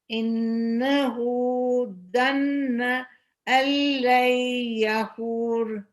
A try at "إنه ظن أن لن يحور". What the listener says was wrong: Can you make the ظا more heavy? إنه ظن. Not ظا. ظن.